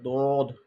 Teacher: দদের উচ্চারণটা হয় জিহ্বার গোড়ার কিনারা, আমাদের যে মাড়ির দাঁত আছে সেই মাড়ির দাঁতের গোড়া থেকে উচ্চারিত হয়, লাগিয়ে উচ্চারিত হয়, দদ, একটু মোটা উচ্চারণটা হবে দদ।